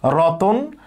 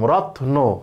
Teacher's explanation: মানে খন্ড এখানে কিন্তু ত এর সাথে কোন স্বরধ্বনি নাই কিন্তু রতন যখন বলব তখন ত এর সাথে একটা অধ্বনি আছে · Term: স্বরভক্তি